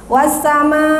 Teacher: Ya, panjangnya 6. Mad wajib itu wajib 6, harus 6 ya Bu ya.